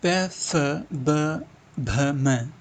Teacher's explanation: प फ भ म ओष्ठ व्यंजन होते हैं।